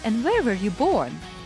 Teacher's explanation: So I ask the question with a falling tone.